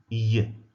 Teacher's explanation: It's produced at the level of the hard palate when it comes into contact with the tongue. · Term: palatal sound